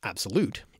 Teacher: two unstressed syllables followed by a stressed syllable as in the word absolute is called an anapest literally struck